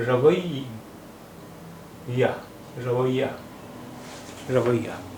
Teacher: یہ پر تشدید ہے اس لیے یا کی آواز دو بار